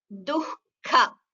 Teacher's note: The ha, the visarga should be heard, and it is heard as half ha. It is not heard as ka. There is no ka in between.